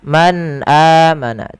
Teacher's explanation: Ada bacaan izhar pada lafal nun sukun bertemu dengan huruf hamzah. Cara membacanya nunnya dijelaskan dengan jelas suara nunnya. Man amana tidak boleh ditahan man amana.